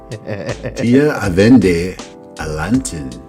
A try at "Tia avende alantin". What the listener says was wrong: Well done.